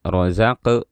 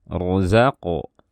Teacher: maka kita harus mengqalqalahkan qaf dengan suara qalqalah yang tebal. Jangan dibaca rozaq, ya, tapi rozaqo, seperti itu.